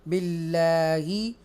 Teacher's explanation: ये तरकीक होगी, यहाँ पर बरीक सॉफ्ट पढ़ा जाएगा क्योंकि अल्लाह के नाम से पहले ज़ेर है